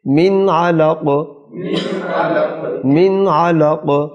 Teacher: قاف پر قلقلہ آئے گا